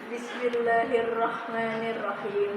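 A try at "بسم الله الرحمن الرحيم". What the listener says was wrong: nunnya ya nunnya Kenapa itu kayak keseret jadi ee belum sempurna harakatnya kemudian ada di huruf rnya itu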